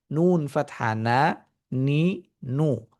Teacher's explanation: নাক থেকেও কিছুটা আওয়াজ নির্গত হয় এবং কিছুটা মুখ থেকেও নির্গত হয় · নুন ও মিম এই দুটি হার্ফ যখন উচ্চারিত হয় তখন দুটি জিনিসের সমন্বয়ে উচ্চারিত হয়, নাক এবং মুখ। অর্থাৎ মুখের মাধ্যমে এবং নাকের মাধ্যমে, উভয়ের মাধ্যমে এই সাউন্ডটা নির্গত হয়। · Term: নাসিক্য ধ্বনি